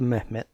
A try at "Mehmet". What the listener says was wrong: I don't think you pronounce the H like that. A lot of people think Turkish sounds like Arabic, and it doesn't at all.